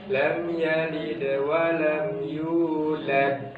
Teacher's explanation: Ada qalqalahnya tapi tipis. Kalau yang terakhir ketika kita berhenti baca maka qalqalahnya tebal.